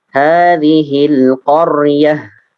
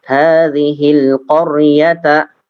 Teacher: ketika tak marbutoh ini diwakafkan, maka dia menjadi apa? Ha, kan? Otomatis menjadi ha.